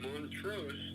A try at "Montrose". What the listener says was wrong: Montrose. No, it's Montrose. It's Montrose, not Moon. It's got nothing to do with the moon. Yes, you said Moon.